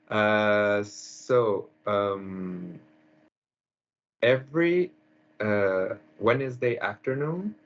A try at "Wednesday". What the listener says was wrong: Pronunciation, the second word. Two syllables. Two beats.